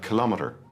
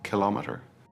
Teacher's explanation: The stress is usually on the second syllable